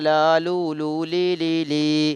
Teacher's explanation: നാവിൻ തലയുടെ അരിവും മേലെ മുൻപല്ലുകളുടെ ഊനുകളും. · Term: ലാമിൻ്റെ മഖ്റജ്